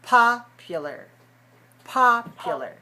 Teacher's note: 3 syllables, stressed on the first.